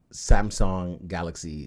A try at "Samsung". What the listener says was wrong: The first 2 times you said Samsung. It's sung. There's a U.